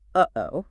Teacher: Your vocal cords quickly slam together to stop the air and then they release it.